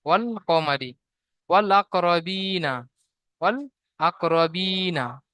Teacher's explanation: হুরুফে কমারি আলিফকে বাদ দিয়ে লাম পড়তে হবে, লাম লাম থেকে পড়তে হবে, আলিফকে উচ্চারণে আসবে না। ওয়াল কমারি, আলিফ পুরো আউট হয়ে যাবে।